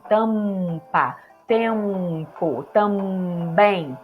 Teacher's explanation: Não dá, né? Então, antes de P e B, nós usamos um fonema também bilabial, que é o M.